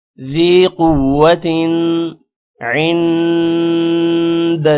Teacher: قوت قوف موٹا ہوگا، تن پر غنہ نہیں ہوگا کیونکہ آگے حروف حلقی عین آ رہا ہے